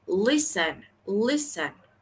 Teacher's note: Como podemos escuchar, la fuerza está al inicio. Listen. Por ende, termina en consonante, vocal, consonante, es regular, pero la fuerza está al inicio, entonces no lo vamos a duplicar, ¿sí?